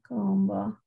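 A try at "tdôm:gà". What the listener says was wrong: Yeah, that's got a T in the front. You have a T. If we're don't, yeah, is it supposed to have a T in the front? It sounds like a That's the way you do it.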